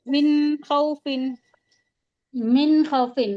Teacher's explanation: नून की आवाज को जाहिर करके पढ़ेंगे। ऐसे होगा [संगीत] तनवीन और नून साकिन के बाद हुफ हकी के छह हुफों में से अगर कोई हुर्फ आता है तो हम नून की आवाज को जाहिर करके पढ़ते हैं। · हम नून की आवाज को जाहिर करके पढ़ेंगे, ऐसे मिन होगा, है ना, इजहार मिन कहते हैं।